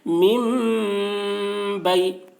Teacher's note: نون کو میم سے بدل کر غنہ اور اخفا کے ساتھ پڑھیں گے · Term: اقلاب